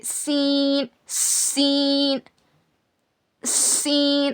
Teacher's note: सीन को अदा करते वक्त सीटी की आवाज आती है। ऐसे सीन सीन सीन और इसको बिल्कुल बारीक पढ़ना।